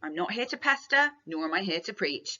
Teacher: note the way that I am using plosive alliteration there with all of the P's